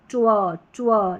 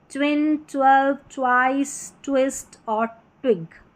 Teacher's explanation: टी W lips plus टंग blended sound है। Lips की बात हो रही है और जीभ की।